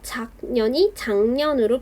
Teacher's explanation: 뒤에 있는 니은의 영향을 받아서 작년이 장년으로 비음화되었습니다. 뒤에 니은의 영향을 받아서 앞에 있는 기역이 이응으로 바뀌었으니까 역행동화라고 볼 수 있겠네요.